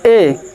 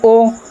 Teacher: लगभग मुख आपका बंद होने के कगार पर ही है